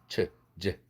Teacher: 즈는 입술 하나도 안 내밀고 발음하는 거예요